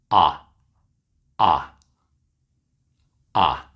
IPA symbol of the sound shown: ʌ